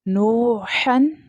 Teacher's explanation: ح ہے یہ middle part of the throat سے ادا ہوتی ہے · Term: موٹی ح